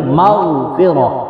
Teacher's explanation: غین کو پر کر کے پڑھیں گے